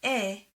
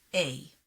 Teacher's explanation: modern hebrew segol and sere are pronounced the same e however in ashkenazi hebrew they are distinct where segol is pronounced e sere is pronounced a but to native hebrew speakers these distinctions are non-existent different from